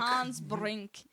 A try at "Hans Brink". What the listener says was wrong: You don't have to roll the R's.